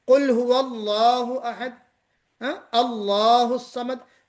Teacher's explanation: تو آپ نے لام کو موٹا پڑھا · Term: لام فرعی